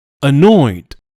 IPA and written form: əˈnɔɪd (annoyed)